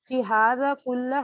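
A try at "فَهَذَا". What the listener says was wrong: فی ھذا نہیں، فھذا. ٹھیک ہے، جزاکم اللہ خیر.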